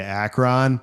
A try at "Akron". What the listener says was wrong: It's the wrong emphasis on the wrong syllable, dude.